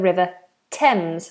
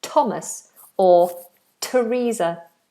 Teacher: on a few occasions usually with names the th becomes a t like the River Thames for example or the name Thomas or